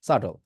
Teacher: এখানে যে বি আছে এইটা হচ্ছে সাইলেন্ট।